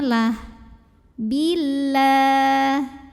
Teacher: lam pada lafaz Allah dibunyikan secara tarqiq